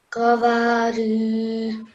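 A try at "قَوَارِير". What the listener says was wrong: So it's qaf, not kaf. Qawarir.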